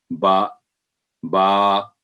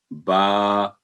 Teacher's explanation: बा, बा, तो ये हल्की आवाज़ वाला लफ्ज़ है। दोनों होंठों को मिलाते वक्त हर्फ अदा होता है, बा। और ये गौर करना है कि जब साउंड 2 हरूफ का होगा, यानी बा और अलिफ, तो 2 सेकंड आवाज़ होगी।